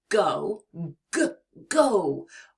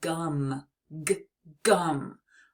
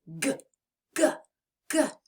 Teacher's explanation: you release your air it's almost like a gentle push and your vocal cords vibrate to make that deep sound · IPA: /g/